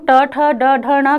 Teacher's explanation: जिह्वा का अग्र का हिस्सा मूर्धा को छूकर झटके से नीचे आता है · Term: मूर्धन्य